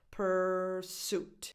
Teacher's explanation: The stress is on the second syllable. Pursuit. So the first vowel has no real definition because the syllable is unstressed.